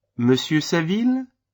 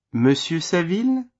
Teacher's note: Note the rising intonation at the end of the name.